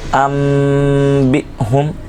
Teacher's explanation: ہے وہ موجود ہے اقلاب کا قاعدہ لگے گا میم بق نون کی جگہ میم کی آواز نکلے گی